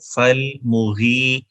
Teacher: فالمغی، غین کے بعد یا ہے، یا لین یعنی ایز لانگ واول یا استعمال ہو رہی ہے تو غی کو 1 الف کے برابر لمبا کریں گے